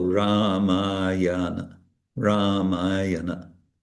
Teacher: the long ah is yeah it's twice as long as the short